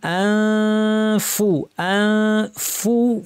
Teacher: ফা বলার জন্য ঠোঁট রেডি, দাঁত ঠোঁটের উপর এসে রেডি, নাক থেকে গুন্না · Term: ইখফা